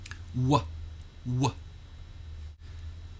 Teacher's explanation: of The W sound in order to articulate the sound so the sound for w has a slight uh sound at the end